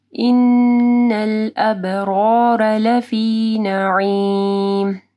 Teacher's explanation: ان نون مشدد ہے، ٹھیک ہے، یہاں پہ غنہ ہوگا. ابرار با کے اوپر کلکلہ کرنا ہے اور دونوں را کے اوپر زبر ہے تو را موٹی پڑھی جائے گی.